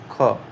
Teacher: तो जो अघोष हुई हो और महाप्राण भी ध्वनि हो वो हमारा हो जाएगा यहां पे ख। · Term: अघोष महाप्राण ध्वनि